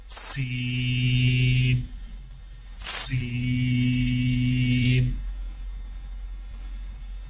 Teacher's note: سین کی ادائیگی میں زبان کی نوک کو سامنے والے نیچے کے 2 دانتوں کے کناروں سے مضبوطی سے لگا کر باریک اور سیٹی جیسی آواز میں پڑھیں